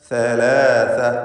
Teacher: നാവിൻ്റെ അറ്റത്തിൻ്റെ മുകൾ ഭാഗവും മേലെ മുൻപല്ലിൻ്റെ അറ്റവും. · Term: സാഇൻ്റെ മഖ്റജ്